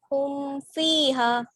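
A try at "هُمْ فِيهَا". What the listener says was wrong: यहाँ पे गुन्ना क्यों होगा? मीम साकिन के पहले पेश हो ऐसा तो हमने कुछ बताया ही नहीं एक बार भी।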